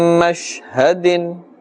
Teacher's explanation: Be careful that we don't stretch the sound of the sheen. Many people make this mistake and say min mashhadin, mash.